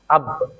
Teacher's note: makhraj bagi huruf ba adalah ee daripada dua bibir kita